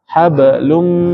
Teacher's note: Fi mat tabi'i 2 harokat, ji mat tabi'i 2 harokat, ha mat tabi'i juga 2 harokat, hab ini qalqalah, lum ini tanwin ketemu huruf mim, idgham bi gunnah. Jadi ditahan, dengungkan.